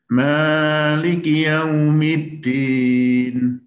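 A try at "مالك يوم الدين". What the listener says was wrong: Memnya kepanjangan satu harokat. Memnya 2 harokat aja.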